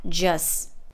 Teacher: in the word just the t is dropped and it's pronounced with the schwa